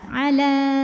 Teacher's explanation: sebelumnya fathah alifnya ini adalah alif bengkok atau Alif maksurah ya maka lamnya jika berhenti panjang dua harakat